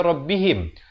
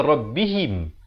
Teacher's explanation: Ha baris bawah bukan bunyi he. Ha baris bawah bunyi hi. Bila bertemu mim jadi him.